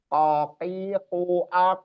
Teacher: qof qof ya adanya di pangkal lidah atau lidah bagian paling dalam